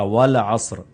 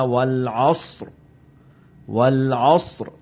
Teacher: لام، عین، صاد یہ بالکل سافٹ پڑھے جائیں گے، لیکن جب را پر اینڈ پر وقف ہوگا تو وہاں پر بھی باقاعدہ را کی ساؤنڈ آنی چاہیے